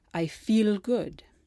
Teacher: you can hear it when someone fails to make the change Italian only uses the light L and not the dark L